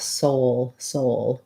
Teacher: they both have the o diphthong so make sure that you're holding your o long enough and that you're relaxing and closing your jaw · Because the L in soul is a dark L, there may be a little bit of a schwa sound, an ul in that, which means that you're going to have a bit of a gliding w between your O and your O, soul, soul.